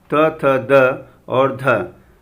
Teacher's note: दंत्य, दांत से जिन वर्णों का उच्चारण होता है ल और त वर्ग।